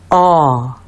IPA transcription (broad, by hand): ɔ